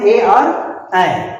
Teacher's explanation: कंठ तालु से उच्चारण होने वाले दो ही वर्ण हैं, ए और ऐ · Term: कंठ तालव्य वर्ण